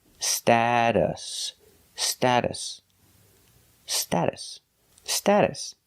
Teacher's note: in the middle is pronounced like a fast D status status the second syllable is pronounced with a relaxed uh uh like cup and up